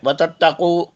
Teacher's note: قاف حلق کے اوپر زبان کی جڑ سے ادا کیجئے